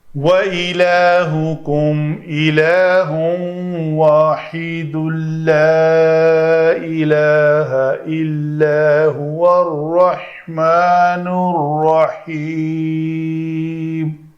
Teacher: اس لا کے اوپر مد آئے گی کیونکہ بعد میں حمزہ سبب مد آ رہا ہے۔